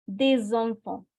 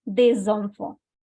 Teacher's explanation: I'm making a liaison between S and E.